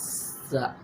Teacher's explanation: یہ حروف یعنی 3 جو ہم نے پڑھے ہیں، اس میں جو سین ہے اس میں یعنی اس کو پتلا کر کے پڑھنا ہے اور اس میں سیٹی کی آواز ہے